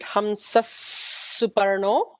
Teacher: After Hamsaha, there is a Visarga followed by Suparnaha with a Sa. So there will be an extra sibilant, Hamsas Suparno.